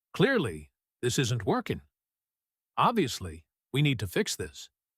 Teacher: Notice once again how your voice naturally wants to add a little extra strength, a little extra push right on the key certainty word in each sentence. That's not something you need to force.